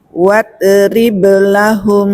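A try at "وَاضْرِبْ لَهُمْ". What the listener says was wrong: Nah, huruf bo masih mantul, tidak boleh.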